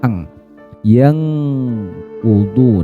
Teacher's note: mensamarkan bunyi dengungan nun sukunnya ini ke huruf qof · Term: ikhfa hakiki